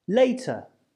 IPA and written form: ˈleɪtə (later)